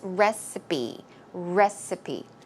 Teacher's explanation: the P sound here is recipe. It's closer to a B sound.